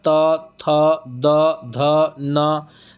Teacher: आपका जो जीभ है वह दांत के पास जाकर के स्पर्श होता है